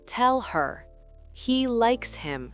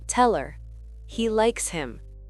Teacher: Cette réduction ne s'arrête pas aux voyelles, elle touche aussi les consonnes comme le H qui disparaît souvent dans les petits mots pour ne pas freiner la phrase. Dans des mots comme he, him ou her, le H s'efface quand il n'est pas accentué.